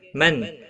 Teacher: نون ساکن کے بعد حروف حلقی کا عین آیا ہے، اظہار حلقی ہوگا، گنہ نہیں کریں گے